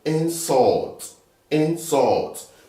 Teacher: you put the stress in the second syllable